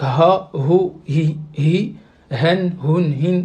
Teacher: c'est le son qui sort vraiment au fond de la gorge.